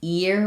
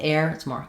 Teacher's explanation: It's higher and starts from the e position instead of the a position